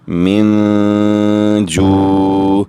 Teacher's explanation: بسم اللہ الرحمن الرحیم، میم نون زیر من، جیم واو پیش جو، من جو، عین 2 زیر عین، من جوعن، نون ساکن کے بعد جیم حروف اخفاء میں سے ہے، آواز ناک میں لے جا کر ہم غنہ بھی کریں گے اور 2 سیکنڈ تک روک کر آواز رکھیں گے